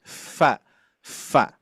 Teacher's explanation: bibir bawah menempel ke gigi seri atas. Atas menyentuh. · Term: huruf fa